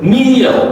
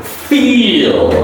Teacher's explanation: M is a nasal and double E is an E is a long stretch E vowel sound, and then the last L is pronounced as a dark L.